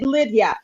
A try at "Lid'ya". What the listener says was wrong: So yes, there is a hyphen in my name, Lidya. So instead of Lydia, it's like lead. So Lidya.